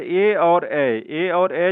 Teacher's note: जो होता है इसका उच्चारण जो होता है कंठ तालुत्य से होता है, जो कि कंठ और तालु में जीभ के स्पर्श से इसका उच्चारण होता है